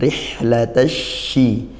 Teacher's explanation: ro kasrah dibaca tarqiq Dibaca tipis